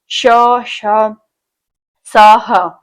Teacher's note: अल्पप्राण odd one में मतलब पहला क ख जो है महाप्राण में आता है जिसमें ज्यादा हवा निकलती है। उष्म हवा यानी गर्म हवा निकलती है बोलते समय जैसे आप खुद बोल के देखिए श स ह तो ये जो है उष्म यानी बोलते समय जो है ज्यादा हवा निकल रही है मुख से और जो है उष्म हवा यानी गर्म हवा निकल रही है।